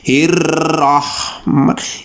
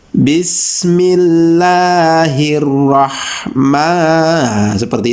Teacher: jadi r-nya tuh ya getarnya Mungkin dua sampai maksimal tiga saja